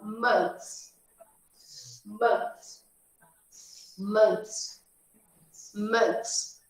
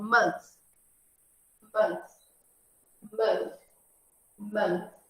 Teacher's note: Esse TH aqui é aquele da barriguinha. É o 6 cortadinho assim. Que é a língua para trás do dente superior.